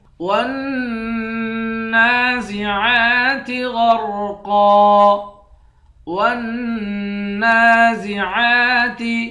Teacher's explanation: واو کو نون کے ساتھ ملا کر نون پر غنہ کریں گے. نون پر کھڑا زبر ہے، ایک الف کے مقدار کھینچ کر پڑھیں گے. عین کے اوپر بھی کھڑا زبر ہے، عین کو بھی ایک الف کے مقدار کھینچ کر پڑھیں گے.